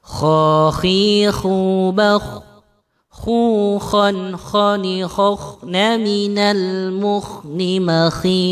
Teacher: Ini makharijul huruf kha, keluar dari tenggorokan bagian atas, ya, dan suaranya tadi agak kita serakkan.